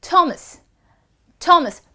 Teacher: practically H is silent, or you have to aspirate your T a little more,